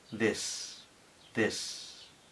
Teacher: tenemos una d explicativa des y una I corta des corta es una I tirando a e